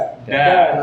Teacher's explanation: Kalau dal ujung lidah pangkal gigi di atas,